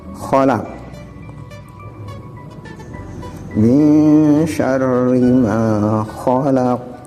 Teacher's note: Terus khalaq, dalam lafaz khalaq di sini kho, di mana kho ini letak hurufnya berdekatan dengan ha, artinya sama-sama huruf dari idhar halqi, jadi tenggorokan tempatnya. Cuman kalau kho ini bertitik, kalau ha ini tanpa titik.